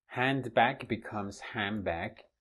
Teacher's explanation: The duh duh is deleted. It becomes nothing. Just disappears.